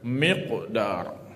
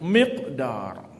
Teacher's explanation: Huruf qalqalah bertanda sukun di tengah perkataan, kalimah perkataan, atau di hujung kalimah, di hujung perkataan, ketika ia dibaca bersambung. Kerana bunyi pantulan qalqalah dibaca bersambung dengan huruf berikutnya, maka ia dibaca tidak terlalu kuat. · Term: qalqalah sughra